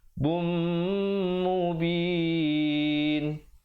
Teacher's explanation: tanwin bertemu mim, dengungkan 2 harakat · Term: idgham bi gunnah